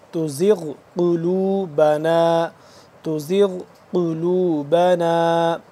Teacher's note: زا کو سختی سے پڑھیں گے اور غین کو پر کر کے موٹا کر کے پڑھیں گے